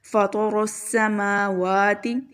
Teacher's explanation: رو بہت موٹا، سین کی آواز سیٹی کے ساتھ